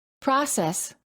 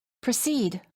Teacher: In the first word, the first syllable is stressed, and therefore the PRO sounds like pro. And in the second word, the first syllable is reduced, and the PRO sounds like pr. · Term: stressed and reduced O